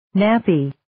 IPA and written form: 'næpiː (Nappy)